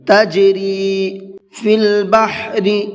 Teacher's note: بڑا ہا ہے، حلق سے نکال کر کے پڑھیں گے